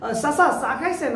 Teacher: So it's pa pa pa pa ta ta ta ta, and this one is cha cha cha cha. Barishal মানুষ চ বলতে পারে না, তারা বলে স।